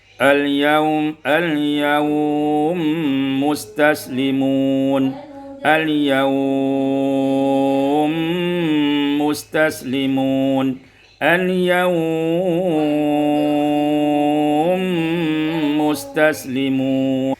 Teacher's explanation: yaitu idghamul mimi fil mim, diidghamkan mim dengan idgham kamil, panjang mad di situ adalah qasar, tawassut dan isba'.